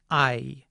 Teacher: This vowel sounds like ah at the beginning and something like I or e at the end. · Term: diphthongs